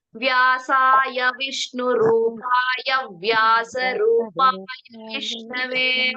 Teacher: ವ್ಯಾಸಾಯ ವಿಷ್ಣು ರೂಪಾಯ ಹೇಳಬೇಕಾದರೆ ಗ್ಯಾಪ್ ಕೊಡಬಾರದು ವ್ಯಾಸಾಯ ವಿಷ್ಣು ರೂಪಾಯ ಅಂತ ದೀರ್ಘ ಹೇಳೋದು ಬೇಡ ವ್ಯಾಸಾಯ ವಿಷ್ಣು ರೂಪಾಯ ವ್ಯಾಸ